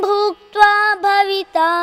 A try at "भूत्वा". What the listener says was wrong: bhutva. It is not bhuktva. There is no k.